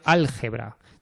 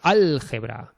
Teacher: Por ejemplo, la palabra árabe álgebra. Tenemos tres sílabas, álgebra. Y al es la tónica